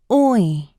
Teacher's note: The /ɔɪ/ is created by blending /ɔ/ and /ɪ/ together to form a new sound. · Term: vowel sound /ɔɪ/